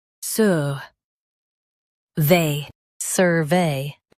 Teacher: Stress suh and keep vey clear.